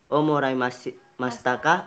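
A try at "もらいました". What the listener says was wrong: Moraimashita. Jangan pakai K lagi. Moraimashita.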